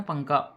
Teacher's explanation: تنوین یا نون ساکن کے بعد حروف اخفا آئیں تو نون کی آواز کو ناک میں چھپا کر پڑھنا چاہیے